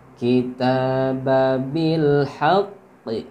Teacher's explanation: ta'nya ini panjang, 2 harokat.